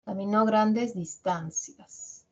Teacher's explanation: Esta oración, por ser enunciativa, la característica que tiene en español es que la última palabra va a presentar un tono descendente, en cadencia, cae